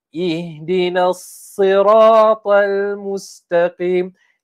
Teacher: antara sifat huruf sad ni adalah kita ni tebalkan namun tidak dimuncungkan. Lagi sekali ustaz akan kongsikan tidak dimuncungkan.